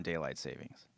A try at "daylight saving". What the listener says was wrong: It's saving, actually. There's no S in it. saving, not savings.